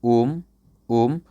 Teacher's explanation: जैसे for example, मान लीजिए कोई व्यक्ति उपयोग करता है ओम, ओम, तो एक लंबा लय लेता है ओम, फिर लास्ट में जाके गिराता है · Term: प्लुत स्वर